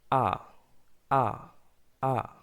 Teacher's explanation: ব্রিটিশরা সাধারণত আর উচ্চারণ করে এভাবে আ, তারা অন্তঃস্থটা উচ্চারণ করে না